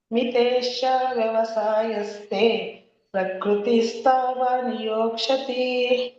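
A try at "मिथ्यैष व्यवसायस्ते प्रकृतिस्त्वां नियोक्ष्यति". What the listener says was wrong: ಮೂರನೇ ಚರಣ ನೋಡಿ ಮಾತಾಜಿ. ಮೂರನೇ ಚರಣ ಹೇಳ್ಬೇಕು, ಮಹಾಪ್ರಾಣ ಹೇಳ್ಬೇಕು. ಮಿಥೈಷ ಶ ಮತ್ತೆ ಮೂರ್ಧನಿ ಮತ್ತೆ ಪ್ರಕೃತಿ ಸ್ತ್ವಾಮರ ಹೇಳಿ ಅಥವಾ ಸ್ತ್ವಾನ್ ಅಂತಾರೆ ಹೇಳಿ. ಪ್ರಕೃತಿ ಸ್ತ್ವಾನ್ ನಿಯೋಕ್ಷತಿ.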